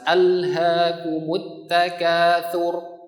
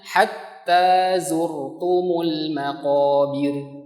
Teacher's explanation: ro yang pertama tebal, tetapi ro setelahnya tipis tarqiq